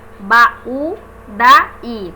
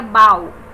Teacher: se não houvesse esse acento tônico, esse U seria uma semivogal e nós teríamos um ditongo, seria bau. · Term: hiato